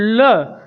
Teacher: जीभ हमारी ऊपर तरफ उठती है और वायु जीभ के बगल से गुजरती है, और बगल को व्याकरण की भाषा में पार्श्व बोलते हैं। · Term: पार्श्विक व्यंजन